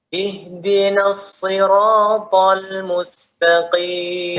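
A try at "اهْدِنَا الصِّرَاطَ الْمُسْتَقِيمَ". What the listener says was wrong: Ya, kurang Pak. Itu baru ngalirkan sedikit.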